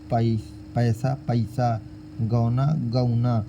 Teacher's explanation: ऐ, औ का उच्चारण आई और औ करके होता है